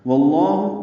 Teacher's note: واو کی زبر کی وجہ سے لام اس میں جلالا پر پڑھیں گے